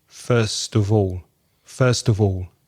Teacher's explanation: the schwa that weak form sound of uh in connected speech